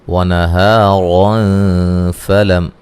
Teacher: یہاں نون تنوین کا اخفا ہوگا باریک